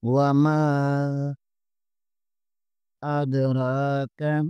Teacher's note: میم زبر کے آگے الف مدہ ہے، اسے بھی 1 الف کے برابر کھینچیں گے۔